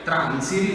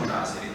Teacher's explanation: l'unica cosa che si può spiegare è la perdita della N, che si chiama nasale alveolare. Cioè voi vedete che praticamente tra transire, anziché dire transiri, diciamo trasiri, cioè si è persa questa N.